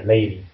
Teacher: 이중모음 이렇게 하나씩 있고 그 사이에 있는 D 소리가 lady가 아니라 lady 그래서 저렇게 플랩으로 나오는 거고요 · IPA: [ɾ]